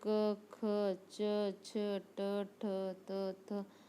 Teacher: अघोष वर्ण स्वर तंत्रियों में ध्वनि का कंपन न हो, इनकी संख्या 13 होती है, जैसे क, ख, च, छ, ट, ठ, त, थ, फ, प, फ, श ख श ह।